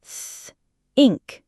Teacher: Then, push air out smoothly between your tongue and upper teeth. There should be no voice, no vibration in your vocal cords, just a stream of air, like a soft F, but with the tongue, th, ink. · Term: unvoiced th